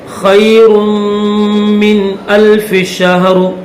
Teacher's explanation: نون ساکن کے بعد یہ حمزہ حروف حلقی ہے، اس وجہ سے یہاں پر غنہ نہیں کریں گے